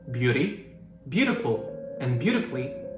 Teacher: beauty, beautiful, and beautifully all have stress on the first syllable